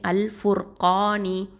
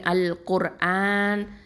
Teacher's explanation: இந்த ரா சுக்கூன் பெற்றிருக்கு முன்னாடி உள்ள எழுத்து தம்மா பெற்றிருக்கிறதுனால நம்ம தஃப்ஹீமாக தான் உச்சரிக்கணும்